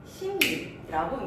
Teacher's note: 자, 여기 이제 역행동화에 대한 예시였고 또 이제 비음화의 다른 케이스가 있는데 앞에 이제 앞말의 종성 자리에서 먼저 비음이 오는 경우 니은이나 미음이 오게 되고 그 다음에 리을이 오게 됐을 때 니은과 미음이 비음이잖아. 비음의 영향을 받아서 리을인 유음이 무엇이 된다? 니은으로 바뀌는 현상, 이거는 비음화 순행동화에 들어가게 됩니다.